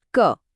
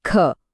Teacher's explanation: ખ બોલતી વખતે કેટલો જોરદાર હવાનો ધમાકો થયો · અલ્પ પ્રાણ એટલે કે ઓછી હવાનો ઉપયોગ અને મહાપ્રાણ એટલે કે વધુ હવાનો ઉપયોગ.